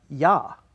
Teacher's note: the open a but it's got the J Glide